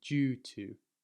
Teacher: in England, we tend to say the D a bit like a J